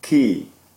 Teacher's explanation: my lips are retracted and shaped in that way to be ready to say the e